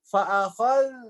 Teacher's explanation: Fa'akhal itu ada mengalirnya, ya. Jangan buru-buru fa'akhadna itu jadinya syiddah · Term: rokhawah